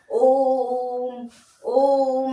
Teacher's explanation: इसको उच्चारण करने में 3 मात्रा का समय लगता है और इसको ओम से उच्चारित किया जाता है। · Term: फिलुप्त